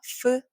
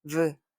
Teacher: 여러분 목, 성대 목에다 이렇게 손가락을 갖다 댔을 때 울림이 있느냐 없느냐의 차이예요. 없으면 f, 있으면 v.